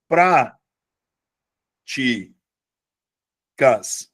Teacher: passa a ter como sílaba tônica a antipenúltima sílaba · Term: proparoxítona